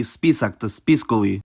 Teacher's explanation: unstressed, short A disappears whenever a suffix is added